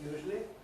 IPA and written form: ˈjuːʒli (usually)